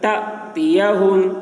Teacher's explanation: الف کے اوپر جزم ہے تو جھٹکا لگے گا